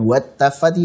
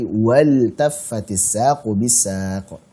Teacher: Sehingga karena ini fi'il, lam sukun pada fi'il ketemu ta, maka dibaca idhar